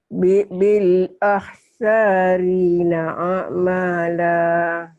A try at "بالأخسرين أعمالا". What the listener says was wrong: Saknya panjang apa pendek ya? Panjang dari mana? Nggak ada yang manjangin. Pendek. Ini barisnya aja panjang salah nih. بالأخسرين أعمالا. بالأخ بالأخسرين أعمالا.